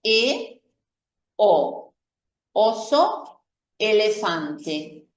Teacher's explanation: La E y la O son vocales semiabiertas, es decir, ya los labios no llegan a aproximarse mucho, pero tampoco es como es el caso de la A, donde la boca queda muy abierta.